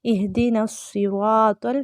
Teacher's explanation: इहदिनस्सिरातल नून को स्वाद के साथ मिलाएंगे